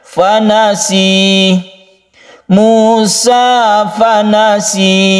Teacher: Jadi ini berupa panjang saja, sinnya itu 1 alif atau 2 ketukan. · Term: mad tabi'i